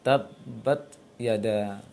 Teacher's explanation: Dulu kan syiddahnya perlu hamasnya, karena hamasnya kecil. Karena itu ketika ta berharokat jangan terlalu banyak anginnya, bahkan bisa dikatakan tidak jelas anginnya